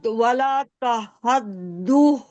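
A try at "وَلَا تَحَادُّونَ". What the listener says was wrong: तहद नहीं, तहादून। हाँ, नून को साकिन करना है, ठीक है।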